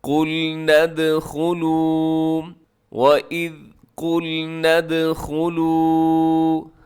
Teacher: یہاں دال حروف قلقلہ میں ہے، تو حروف قلقلہ پر جب جزم آتی ہے تو اس کو ہلایا جاتا ہے